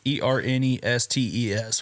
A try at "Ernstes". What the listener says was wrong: Ernstes. Nope. ST. No, everybody thinks it does. I've heard Ernestes, Ernst. No, it is. Yep, pronounce exactly how it's spelled. Ernstes.